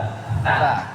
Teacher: Misalnya ada ta yang lidahnya keluar, ta.